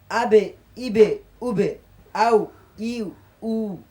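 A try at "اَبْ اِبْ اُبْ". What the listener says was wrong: সুন্দর হয়েছে, একটু পাতলা হবে, মোটা হয়ে যাচ্ছে। আবে, ইবে, উবে, আউ, ইউ, উ।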